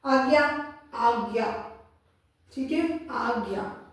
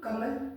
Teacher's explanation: जैसे इसका आप एग्जाम्पल ले लो, अगर मैं बोलूं आज्ञा, आज्ञा, ठीक है, आज्ञा, और मैं बोलूं कमल, तो कमल बोलने में जल्दी बोला जाएगा, आज्ञा में उससे मेरा समय थोड़ा ज्यादा ही लगेगा। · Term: दीर्घ स्वर